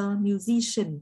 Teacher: Và number 8 là works as a musician, trọng âm nó vào tiết thứ hai nhé. The stress falls on the second syllable.